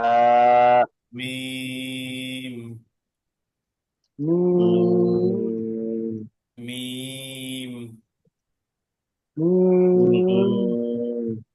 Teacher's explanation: মিমটা হচ্ছে দুই ঠোঁটের শুকনো অংশ থেকে।